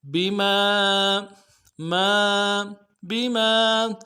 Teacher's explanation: با کو نرم سے ادا کریں گے، میم کے ساتھ الف مدہ ہے ایک انداز میں کھینچیں گے